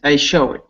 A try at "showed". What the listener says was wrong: It came out showed, but it should be showed. One syllable, one sound. One beat.